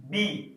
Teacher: जैसे अगर हम एक कॉन्सोनेंट लेटर लेते हैं बी, आप बी बोलकर देखिए, वोकल कॉर्ड के साथ आपका लिप्स भी काम करता है। बी, जैसे ही आप बी बोलते हैं, आपका जो लिप्स है वो आपस में टच होता है